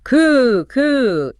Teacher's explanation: It is just a puff of air. It's an unvoiced consonant.